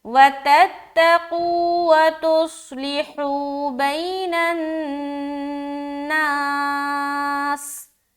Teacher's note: یہاں پر نون مشدد کا غنہ کریں گے اور بئی میں یا لین کا قاعدہ کریں گے، حو میں واو مدہ کا قاعدہ کریں گے.